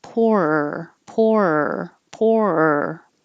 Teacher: you don't have to have a divided por er but you have to have two beats